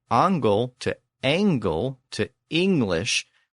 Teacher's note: we can hear that shift from the back vowel A to the front vowel A, and then in later English to E